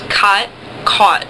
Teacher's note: sometimes people don't make a difference between ah and aw. I do in my dialect, but there are dialects that don't.